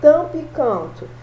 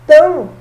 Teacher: você fala o T e o A nasalizado